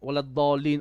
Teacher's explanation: we have 6 beats of mud before a dad with a shadda